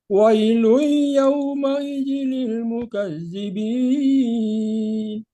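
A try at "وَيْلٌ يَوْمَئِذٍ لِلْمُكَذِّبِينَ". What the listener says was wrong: Ini tahan dulu. Wailui idgham gunanya.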